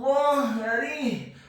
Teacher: huruf ra-nya dibaca tipis kasrah 1 harokat